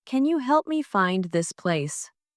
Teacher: Stressed words are help, find, and place.